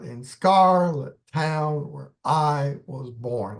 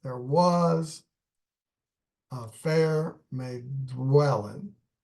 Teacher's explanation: you've got one line with 4 stresses, followed by a line with only 3 stresses